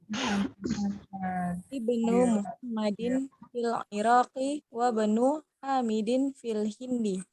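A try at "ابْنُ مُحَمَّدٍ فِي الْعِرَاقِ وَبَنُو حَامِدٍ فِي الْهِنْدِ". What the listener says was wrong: Ahsan, ya. Ahsan.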